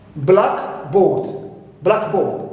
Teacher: It's one word, one compound. Now, we always stress the first part, clear, which is black